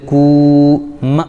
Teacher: کاف پر پیش لیکن واو ساکن تو واو مدہ ہو جائے گا